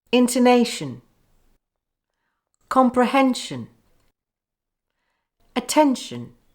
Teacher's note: These common noun endings are weak. The individual vowel sounds blend together. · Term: weak schwa sound endings